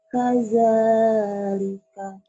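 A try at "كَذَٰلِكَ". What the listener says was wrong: Kada jangan kaja ya, kada. Kadzalika. Kadzalika.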